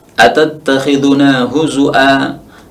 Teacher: Imam Syu'bah membacanya bil hamzi, dengan hamzah.